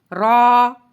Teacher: زبان کی پشت والا کنارہ اوپر والے دانتوں کے مسوڑے سے لگے تو را ادا ہوتا ہے